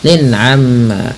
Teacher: Jelas suara tanwinnya karena dia izhar halqi. Amma ghunah tahan bunyi mimnya sebagaimana nun berharakat tasdid.